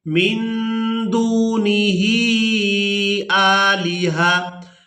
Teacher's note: نون ساکن پر اخفا کریں گے، نون کی آواز کو ناک میں چھپا کر ادا کریں گے